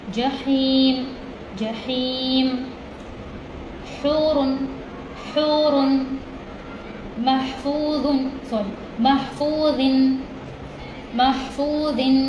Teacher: الحمد یہ ہا ہے، حلق کے درمیانی حصے سے ادا ہوگی